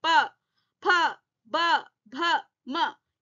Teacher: होठों के पास से जब ध्वनि आ रही है, साउंड आ रही है, तो ये ओष्ठे ध्वनि कहलाएंगे, ओष्ठे वर्ण कहलाएंगे।